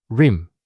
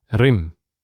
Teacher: So we say rim. There's no emphasis on the R sound. In Arabic, there's more emphasis on it.